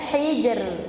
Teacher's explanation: Sukun, ya kan, karena waqaf hijr. Ro sukun, sebelumnya kasroh. Ketika waqaf maka tipis.